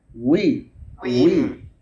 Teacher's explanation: ওয়াও ঠোঁট গোল করে আনতে হবে, গোল না হলে হামজার মতোই হয়ে যাবে, খেয়াল করবেন, উই এরকম হবে, গোল উই উই শুরু হবে।